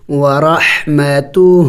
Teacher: الٹا پیش کو بھی ایک الف کا مقدار کھینچنا ہوتا ہے، لمبا کرنا ہوتا ہے